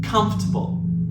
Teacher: the correct stress is on the first syllable